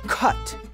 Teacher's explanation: Consonants are determined by voice, place and manner, and a “kuh” is a voiceless back stop. · a K is a voiceless back stop. When followed by a U, like in the word cut, that voiceless backstop of the K remains pretty easy to pull off.